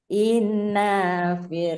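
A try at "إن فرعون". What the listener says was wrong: Nanya nggak panjang. Nanya nggak panjang karena tidak ada apa-apa. Langsung.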